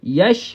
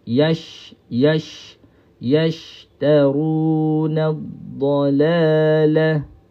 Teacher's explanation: Sebut shin tak perlu muncung, hanya kita lebarkan sahaja, sama seperti kita sebut ya. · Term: huruf shin